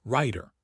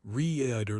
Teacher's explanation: The flap T makes writer and rider sound very similar. The clue is actually in the vowel length.